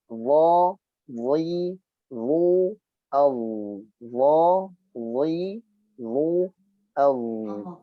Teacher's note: dha dibaca dengan suara yang memanjang atau rokhawah. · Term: huruf dha